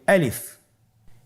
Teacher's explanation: আলিফ হরফটি মাখরাজ হলো আপনার মুখের শূন্যস্থান থেকে, গলা এবং মুখের শূন্যস্থান হতে আলিফ হরফটি উচ্চারিত হয়